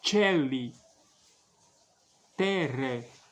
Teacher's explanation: tem que pronunciar o E aberto, como se fosse E com acento agudo.